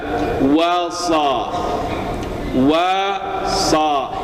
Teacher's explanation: huruf shad itu menebalkan bacaannya itu tidak dengan memajukan bibir, tetapi membuka bibir lebih luas lagi. Ya, jadi bukan bibirnya bukan maju, tetapi bibir atas ke atas, bibir bawah ke bawah.